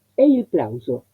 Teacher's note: tengo en la palabra aplauso una S intervocálica, adentro de la palabra entre dos vocales. Entonces no es este fonema, sino es la S sonora.